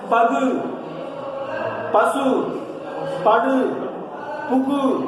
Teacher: தனக்குரிய மாத்திரையில் இருந்து குறையாத, சரிங்களா, ஓசை அளவு குறையாத உகரம் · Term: முற்றியல் உகரம்